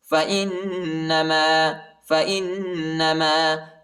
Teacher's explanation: حمزہ کو نون کے ساتھ ملائیں گے اور غنہ کریں گے